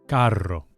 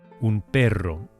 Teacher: Whenever we have a double R in Spanish, it's rolled or trilled.